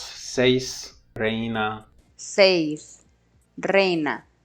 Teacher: Diphthong, head first, has an off glide, therefore it's a falling diphthong.